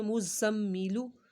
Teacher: ज़ा की सीटी निकालनी है। मुज़म्मिलु, और यहाँ पर आपने गुन्ना भी करना है।